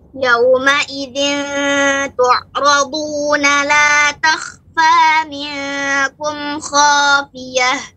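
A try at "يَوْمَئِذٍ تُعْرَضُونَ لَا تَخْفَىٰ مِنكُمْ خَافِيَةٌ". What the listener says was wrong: Ya, untuk ain tu' ya lebih diperbanyak lagi. Ya, ini sifatnya bainiyah. Tu' ya, tu'.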